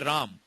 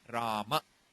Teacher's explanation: But whereas in Sanskrit you say Rama. That A in the end is clearly pronounced.